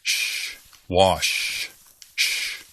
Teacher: You make this sound in your mouth, not with your vocal cords.